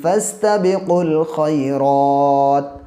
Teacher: واو الف الف تو یہ سائلنٹ ہے، قاف کو ڈائریکٹ لام سے ملا دیں گے